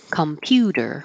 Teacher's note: Make that T a D.